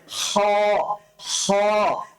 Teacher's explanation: হটা উচ্চারণ করার জন্য আপনার সেই কণ্ঠনালীতেই ব্যবহার করতে হবে, তবে কণ্ঠনালীর শেষাংশের দিকে যেতে হবে। কণ্ঠনালীর শেষের অংশ থেকে আপনি উচ্চারণ করবেন হ। হ। উচ্চারণটা যত ভেতর থেকে নিয়ে আসতে পারেন আপনি, আপনার এই হ উচ্চারণটা যত ভেতর থেকে, কণ্ঠনালীর যত গভীর থেকে আপনি উঠিয়ে নিয়ে আসতে পারেন।